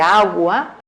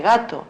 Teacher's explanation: Por ejemplo, no vamos a forzar que la G de agua sea tan tensa como la de gato, porque es un aproximante y en la posición intervocálica en la que está perfecto que sea más relajado